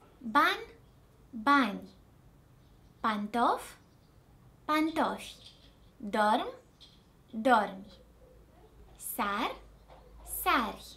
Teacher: When it appears at the end of words, I is not pronounced fully, but as a very faint sound, especially when it's preceded by a consonant. I is almost silent.